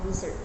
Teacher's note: In the word desert, verb meaning to abandon the stress shift to the second syllable desert. By emphasizing different syllables, the meaning of the word changes, illustrating how crucial word stress is for clear communication.